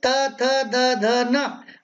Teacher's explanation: त थ द ध न, और ल स का उच्चारण स्थान दंत है।